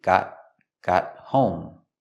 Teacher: We see the T in got is a stop T.